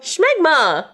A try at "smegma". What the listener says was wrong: You're adding an H to it.